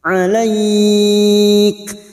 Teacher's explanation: fathah dengan Ya Sukun dan diikuti huruf hidup yang dibaca waakaf namanya hukum bacaan mad lin empat harakat kita panjangkan